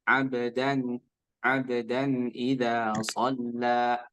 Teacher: Bacanya tadi mendengung. Harusnya tidak. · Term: izhar